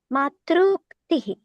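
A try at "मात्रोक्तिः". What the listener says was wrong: Why matruktihi? This is not savarna.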